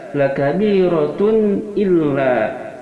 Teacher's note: tun di sini tidak ada dengungan dan tidak ada juga kesamaran · cara bacanya tanwin dhamma ini n-nya dibaca dengan jelas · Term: idhar halqi